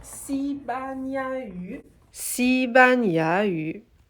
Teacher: 西 班 牙 语 is future me here, so I just noticed that I said the third syllable ya with the incorrect tone. So instead of ya, it's ya, the second tone, the rising tone.